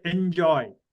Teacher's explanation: the tongue is touching about the front roof of the mouth it is still not rolled back